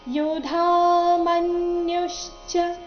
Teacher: ಮನ್ಯುಶ್ಚ ಮ ಮೇಲೆ ಆಘಾತ, ನ್ಯೂ ಮೇಲೆ ಸಹ ಆಘಾತ ಇದೆ.